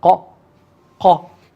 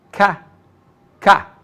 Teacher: So qaf with a fatha gives you qa, qa. It's more glottal, qa, qa. And kaf with a fatha gives you ka, ka.